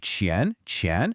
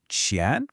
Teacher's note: Then we have qián qián, which is the second or rising tone. It should sound like you're asking a question in English with that upward inflection.